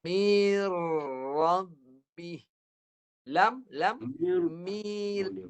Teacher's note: masuk pada ra, masuk pada lam. Terus masuk. Tanpa dengung jangan dengung, itu je. 2 huruf tu jangan dengung. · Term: idgham